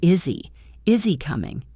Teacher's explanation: you do not need to separate the words. You can drop the H and say is he. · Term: H dropping